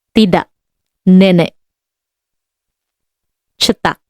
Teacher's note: K. Like English, except that in the final position, it is unreleased. Glottal stop.